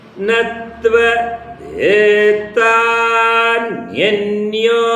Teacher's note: ದೇ ಮತ್ತೆ ನ್ಯ ಇದನ್ನ ಇಳಿಸಿದೀನಿ ಅವೆರಡು ಕೂಡ ಅನುದಾತ